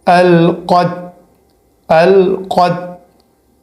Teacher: اب قط پڑھنا یہ غلط ہے، قط نہیں پڑھنا ہے، قط پڑھنا ہے، پہلے بڑا قوف آنا چاہیے اور پھر لاسٹ میں جو ہے وہ چھوٹی تا کا آواز آنا چاہیے۔